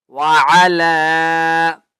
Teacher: لام کو ایک الف کی مقدار کھینچ کر پڑھیں گے